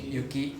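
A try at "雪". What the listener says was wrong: Not so much of a F sound. Remember the first lesson, right?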